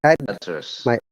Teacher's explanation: double syllable. If it is a noun, always remember it is stress on the first part of the syllable, and it is upper intonation to down intonation.